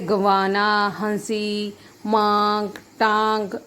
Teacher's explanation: और उच्चारण करते समय हवा नाक और मुख से समान दबाव के साथ बाहर निकल, जब हम इनका उच्चारण करते हैं तो हवा जो है, वायु जो है वो नाक और मुख दोनों से समान रूप से बाहर निकलती है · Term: अनुनासिक